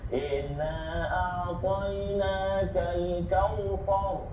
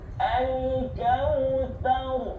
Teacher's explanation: Dia nak tebalkan huruf ra tapi ta tu terikut. Jangan terikut, tipiskan ta tu.